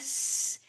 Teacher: the S sound is incredibly high pitched very quiet